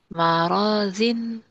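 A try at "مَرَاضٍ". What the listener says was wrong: Maradin. Do. Maradin. Jangan zin.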